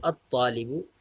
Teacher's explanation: اسی طرح طالبن کے اوپر جب ہم الف لام داخل کرتے ہیں تو الطالب، یعنی الف لام کو ہم لام کو حذف کر دیتے ہیں اور طا کے ساتھ الف حمزہ کو ادغام کر دیتے ہیں